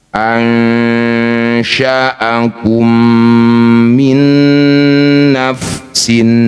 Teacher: mim pertama masukkan mim kedua dengung Dua harakat. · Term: idgham mim mim, idgham mimi